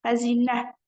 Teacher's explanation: Xəzinə vurğu düşür sonuncu hecaya, amma uzanma var ikinci hecasında.